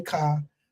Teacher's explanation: We say car. We just don't put the R. But to hear niggas stretch the R fucked me up.